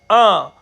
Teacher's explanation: अनुनासिक का मतलब होता है इसमें थोड़ी सी हवा आपके नाक से निकलती है